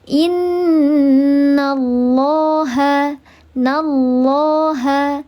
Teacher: Namanya lafzul jalalah tafkhim sahih maka dibacanya tebal.